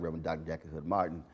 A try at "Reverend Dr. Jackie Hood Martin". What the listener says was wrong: you said that way too fast. You said that shit like one word. You got to break